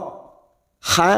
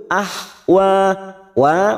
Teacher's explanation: huruf ini dibaca jelas tanpa dengung an ah WA ah WA ha kita lembutkan jangan samakan dengan Kho ha Lebih lembut